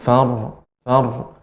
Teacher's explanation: ro ini termasuk sifatnya bainiah sehingga ada sedikit memanjang